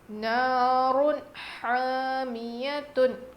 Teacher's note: تنوین کے بعد یعنی دو پیش کے بعد حروف حلقی میں سے ح آیا ہے، اسی لیے ہم نون کی آواز کو ظاہر کر کے پڑھیں گے